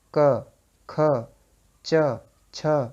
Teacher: जब श्वास का प्रयोग होता है अघोष में, तो उसमें स्वर तंत्रियां झंकृत नहीं होंगी।